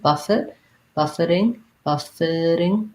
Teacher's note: This is an example of that T is more of a flap, so we end up saying it more like a D sound.